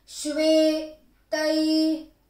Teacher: sh is half, ve is long